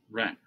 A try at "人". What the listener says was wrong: Excellent. Ren. Rising tone.